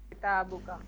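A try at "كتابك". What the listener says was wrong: माशाल्लाह, किताबुका।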